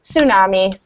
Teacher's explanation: The T kind of disappears.